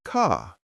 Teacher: The British accent tends to soften the R, so car sounds more like car.